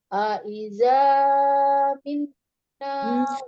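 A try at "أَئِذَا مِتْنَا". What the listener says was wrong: Tidak terlalu panjang, azannya tidak. Aiza kepanjangan, Umi. 2 harokat saja. Aiza mitna.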